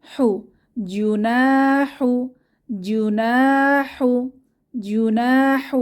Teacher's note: জু না নাতে এক আলিফ টেনে পড়বো আলিফ মাদ